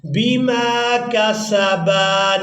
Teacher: با کو الف مدہ کی وجہ سے کھینچ کر ادا کیا جائے گا۔